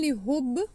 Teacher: the ba is with kalkala because ba is with sakoon